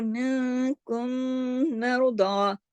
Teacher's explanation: جو ایک میم ساکن ہے اور دوسرا میم حرکت والا ہے، دونوں کو ملا بھی دیں گے اور دونوں میں غنہ بھی کر دیں گے